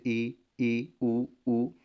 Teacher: ऐसे स्वर जिनको बोलने में मुख ज़्यादा खुलता नहीं, लगभग बंद ही रहता है, उन्हें समृद्ध स्वर, जैसे ई, उ, मुंह को बिना खोले भी से हम लोग बोल सकते हैं। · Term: समृत स्वर